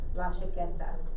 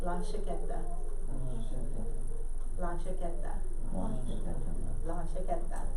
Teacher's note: It has a sh sound. La chaqueta. Not ja, sh.